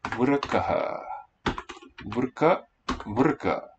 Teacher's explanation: In Vedic, the first syllable is accented.